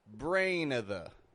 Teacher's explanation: I'm using a schwa there. I'm not using of. I'm using a schwa.